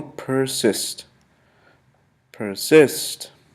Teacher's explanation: persist has two syllables per cyst persist once more persist persist the accents is placed basically on the second syllable